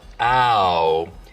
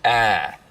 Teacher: smoothing is when you take a diphthong, like ow, and smooth it out so it's just one sound, ah.